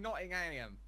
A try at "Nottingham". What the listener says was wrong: Even though the northerners actually, I think, say Nottingham. Nottingham. Nottingham. Still though, what's making you say ham? It's all that American propaganda, that's what it is.